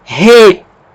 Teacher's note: Como a aspiração é forte, ela vai alterar a pronúncia da vogal. No lugar de pronunciar E, nós vamos pronunciar RE. E como tem um acento, essa é a sílaba tônica.